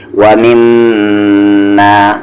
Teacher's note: میم پر غنہ کریں گے کیونکہ تشدید ہے، ومما ما آواز کو ناک میں رکھنا غنہ کہلاتا ہے.